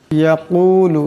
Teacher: বড় কাফ আছে, আওয়াজটি গলা থেকে আনতে হবে।